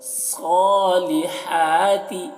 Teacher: صاد کو موٹا کر کے پڑھ رہے ہیں